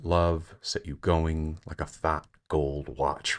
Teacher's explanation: sort of triple stress at the end of the line